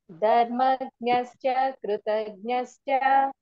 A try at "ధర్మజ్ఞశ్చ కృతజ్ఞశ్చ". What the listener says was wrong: దీర్ఘం చెప్తున్నారు మీరు దీర్ఘం లేదు.